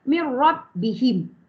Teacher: nun mati bertemu ra dia panggil Idam bilaunah masuk tanpa dengung bacaan kita Nun tu dimasukkan kepada ra tanpa dengung Cumanya bunyi Nun hilang